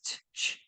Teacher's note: If you put it together, ch, it's a stop and then a little bit of friction at the end